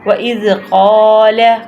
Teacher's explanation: وَإِذْ قَالَ إِبْرَاهِيمُ وَإِذْ قَالَ، قاف قلقلے والا حروف ہے جو کہ موٹا حروف ادا کرتے ہیں، اور اس کے پہلے جو ہے زبر ہے اور دوسرا حروف خالی الف ہے، تو اس لیے ہم اس قاف کو لمبا بھی کریں گے